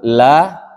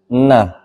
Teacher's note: Jadi makhraj huruf nun itu kan ada di ee ujung lisan menyentuh langit-langit. Jadi ujung lidahnya menyentuh ke langit-langit.